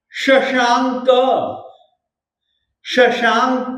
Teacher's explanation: संपूर्ण मंडल शशांक, देखिए ये पर में क है, क से पहले अनुस्वार है, तो इसका उच्चारण हम लोग ग के रूप में करेंगे